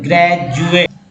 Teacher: तो ग्रेजुएट में डी को जो है ज उच्चारण किया गया है